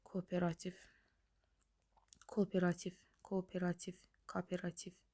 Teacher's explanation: Qoşa saitlərdən biri tələffüz zamanı düşür.